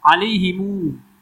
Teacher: Alaihimu ada silah mim jamak. Panjang.